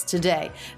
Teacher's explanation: a little bit more stress on the second syllable of today